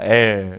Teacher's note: 혀끝을 윗잇몸에 대고 혀의 양옆은 아래로 내려서 기류를 양옆으로 통과시켜 발음하는 게 이 치경 설측 접근음입니다